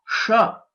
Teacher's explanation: this is a murdhanya letter and we'll have to roll back our tongue